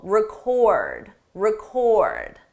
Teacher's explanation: The difference depends on syllable stress. With the verb, the stress is on the second syllable